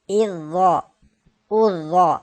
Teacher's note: اس حرف کو ہم نے موٹا اس لیے پڑھا ہے کہ یہ حرف مستعلیہ ہے